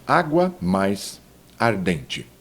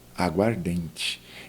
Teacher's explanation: O fonema A vai morrer em um só. Morrer não é bem, vai se fundir.